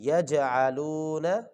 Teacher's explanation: یج یہاں پہ جو ہے نا جیم کے اوپر قلقلہ کریں گے جی